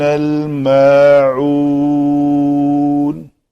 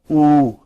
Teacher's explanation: دیکھیں حمزہ پیشوا او، عین پیشوا عو. عین کی آواز وسط حلق سے نکلنی چاہیے. یہ او اور عو اور یہ پھر عو، یہ ان دونوں پہ آواز ایک جیسی رہنی چاہیے، یہاں پہ مختلف ہونی چاہیے.